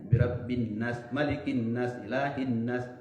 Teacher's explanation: Nun yang bertasdid di situ harus ditahan, dibaca dengan dengung, dilamakan ya dengan satu alif atau dua harokat atau dua ketukan dalam ilmu kesenian.